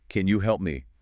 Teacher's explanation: Dropping the pitch completely and abruptly. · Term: overfalling mistake